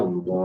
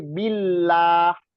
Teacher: Tapi kan Allah itu tafkhim, tapi billah itu tarkhim itu tipis.